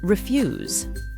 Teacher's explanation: don't forget to stress the word on the second syllable.